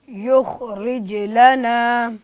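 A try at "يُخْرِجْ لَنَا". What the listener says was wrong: युख, ये गलती है, ये मिस्टेक है। ख़ा की अदायगी में आपने कलकला नहीं करना। युखरिज लना,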